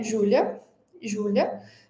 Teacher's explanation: a vogal A em posições finais, sobretudo posições finais átonas, né, a gente quase não pronuncia, ela quase desaparece na fala · E a gente quase não, a gente não fala Julia, mas Júlia. Então esse som de a ele quase desaparece, ele é bem fraco. Eh, isso é um chuá.